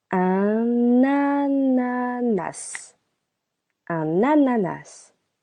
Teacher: we link the preposition un with the word ananas